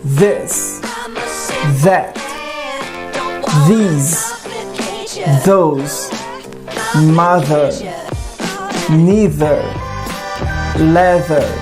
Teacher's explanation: nós vamos manter a língua entre os dentes, só que agora de ar saindo vai sair a voz. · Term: voiced